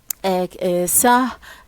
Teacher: sa is a fricative voiceless consonant